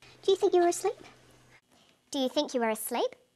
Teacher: Her voice goes up at the end of the sentence. We call this a rising tone. The rising tone is used for yes-no questions, questions that need a yes or a no answer.